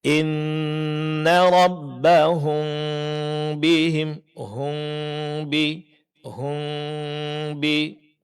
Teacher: di saat kita mendengungkannya, posisi kedua bibir itu dimonyongkan, kemudian sedikit direnggangkan untuk menyamarkan bunyi mimnya. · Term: ikhfa syafawi